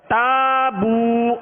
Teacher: واو مدہ ہے، ہونٹوں کو کامل گول کر کے ایک الف کی مقدار میں اسے بھی کھینچ کر ادا کرنا ہے